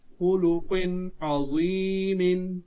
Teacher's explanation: یہ حرف قلقلہ قاف ہے، ساکن حالت میں ہے تو اس پر قلقلہ خوب ظاہر ہوگا